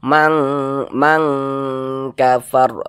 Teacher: bukan huruf tebal huruf Kaf bukan huruf istiala maka dibaca tipis saja